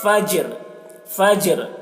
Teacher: جیم میں قلقلہ کر رہے ہیں اور را کی آواز کو ظاہر کر رہے ہیں